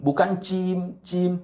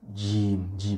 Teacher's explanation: di bukan di ujung lidah atau di Pangkal lidah Bukan tapi ada di tengah-tengah lidah dan menyentuh langit-langit atas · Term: huruf Jim